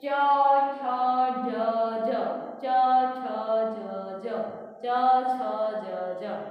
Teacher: તાલવ્ય વ્યંજનો કે જેમાં જીભનો સ્પર્શ તાળવાએ થાય